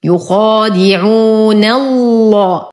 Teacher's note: ننتقل من فتحة النون إلى توسط اللام المغلظة في اسم الجلالة